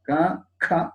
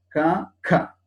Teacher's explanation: ഇപ്പോ ഓരോ ഇപ്പൊ ക എന്ന് ഉച്ചരിച്ചു, അടുത്തത് അത് ഖരം ആണ്, അത് കഴിഞ്ഞിട്ട് അധിഖരം ഉച്ചാരണം വ്യത്യാസമുണ്ട്. ക ഖ എന്നാണ്. അതിലൊരു ഹകാരം കൂടി ചേർത്ത് ഒന്ന് പ്രസ് ചെയ്യേണ്ടതുണ്ട്.